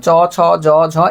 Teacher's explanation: তালব্য অর্থাৎ তালু থেকে উচ্চারণ হয়